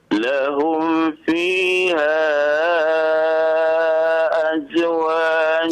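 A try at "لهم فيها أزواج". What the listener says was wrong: Jangan di qalqalah huruf zai ya Pak ya. Huruf zai bukan huruf qalqalah ya. Lahum fiha azwajum.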